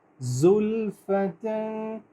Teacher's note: یہ ذال نہیں ہے، یہ زا ہے، بزنگ ساؤنڈ آنی چاہیے۔